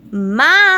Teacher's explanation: O má foi alongado, né? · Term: proparoxítona